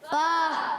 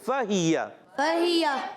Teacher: फ़ा अदा होता है ऊपर वाले दांतों के किनारे। जब नीचे वाले होंठ के तर हिस्से से लगते हैं तो अदा होता है फ़ा